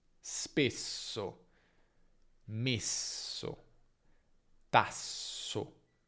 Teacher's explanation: Se la S è doppia è s, pronunciata però un po' più lunga.